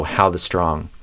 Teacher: strong's going to be stressed more than the and how will probably be stressed more than 'the' as well